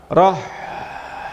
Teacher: Rokhawah ini cirinya mengalir. Mengalir ketika disukun dia akan tetap berbunyi sampai nanti nafasnya habis. Contohnya roh, huruf ha, roh masih tetap bisa bunyi.